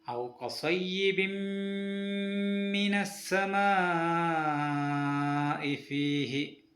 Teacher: സുക്കൂനിലെ നൂനിന് ശേഷമോ തൻവീനിന് ശേഷമോ മീം വന്നതുകൊണ്ട് അവയെ മണിപ്പിച്ചുകൊണ്ട് ചേർത്തോതണം. മീമിന് ഷദ്ദുള്ളത് കൊണ്ട് 2 ഹർക്കത്ത് വരെ നീട്ടണം. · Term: ഇദ്ഗാം ബിഗുന്ന